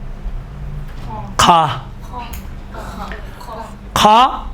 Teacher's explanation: کھا ابتداء حلق سے نکلتا ہے، اس کی حالت خراٹے والی حالت۔ مثلا کوئی آدمی سوتے وقت خراٹے مارتا ہے، یہ دیکھیں یہ خراٹے، یہ سے کھا ادا ہوتا ہے۔